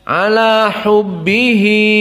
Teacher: hubbihi dalam keadaan mad silah. Maka dua harokat.